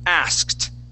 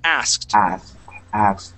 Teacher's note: we're going to use that uh that Ed ending will be a t sound